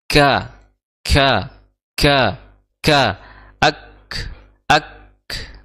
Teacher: dia memiliki sifat hams sifat hams jadi sedikit mengalir nafas ya mengalir nafasnya · huruf Kaf itu makhrajnya pas di pertengahan itu atau di pertemuan antara ee langit-langit yang berdaging dan langit-langit yang bertulang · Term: makhraj huruf huruf Kaf